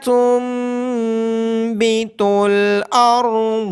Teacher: نون ساکن کے بعد حرف اقلاب یعنی با ہونے کی وجہ سے نون ساکن کی آواز کو میم میں بدل دیا جائے گا، را اور ضاد کو موٹی آواز کے ساتھ پڑھا جائے گا، نون ساکن پہ اخفا ہوگا، میم مشدد ہونے کی وجہ سے اس پہ غنہ کیا جائے گا، لام کے بعد الف مدہ اور میم کے بعد واو مدہ ہونے کی وجہ سے ان دونوں کو لمبا کیا جائے گا۔